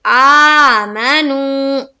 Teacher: واو ساکن سے پہلے پیش ہو تو واو مدہ کا قاعدہ بنتا ہے، اور واو مدہ کو ہم کتنا کھینچتے ہیں؟ ایک الف کے باقدر